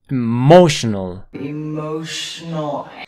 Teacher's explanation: aquí la palabra fuerte está en la segunda sílaba